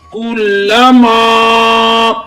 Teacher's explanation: یہاں الف مدہ ہو رہا ہے، ایک الف کی مقدار کھینچ کر پڑھیں گے۔